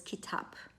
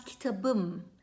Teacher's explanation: possessed suffix to kitab which is um right it becomes kitabum so pe becomes be right so it softens